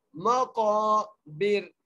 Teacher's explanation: काफ को मोटा करके पढ़ेंगे और एक अलिफ की मिदार खींच कर भी पढ़ेंगे